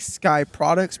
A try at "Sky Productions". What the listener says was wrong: Sky Products. Sky Productions. You keep saying products.